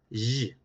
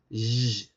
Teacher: tenemos el fricativo sibilante posalveolar sonoro